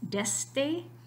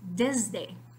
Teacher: the voicing of the D it is a voiced sound it retro actively affects the sound that comes before it in this case the S sound turning to the Z so